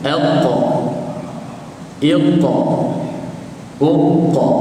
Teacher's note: Apabila menyebut huruf qaf, secara automatik kita rasa pangkal lidah belakang kita dia naik. Ni ujung lidah, ni pangkal, dia naik sentuh dekat langit belakang bahagian lembut.